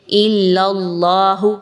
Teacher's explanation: حرف جلالہ اللہ کو پر پڑھا جائے گا، باریک نہیں پڑھنا